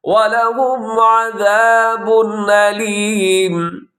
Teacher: عَذَابٌ أَلِيمٌ، عذاب پہ تنوین ہے آخر میں با کے اوپر، اس کے بعد حمزہ ہے تو یہاں پہ اظہار ہوگا، غنہ نہیں ہوگا، تیزی سے آپ پڑھیں گے